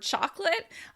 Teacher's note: We often drop syllables in that word because we say it so often. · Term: reduced words